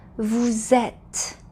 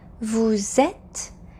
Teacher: And please notice that when we say vous êtes, we need to hear that Z sound because we're linking the final S in vous to the vowel E in et. This is called the liaison in French.